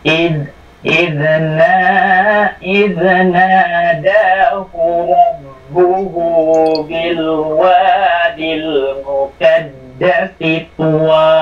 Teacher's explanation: may magpapahaba lang diyan, yung nada at saka yung hu sa rabbuhu.